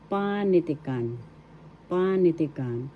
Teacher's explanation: The first syllable is where the accent is.